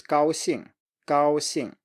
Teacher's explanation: Okay, next pair is first tone plus fourth tone. So it's a high flat tone plus falling tone.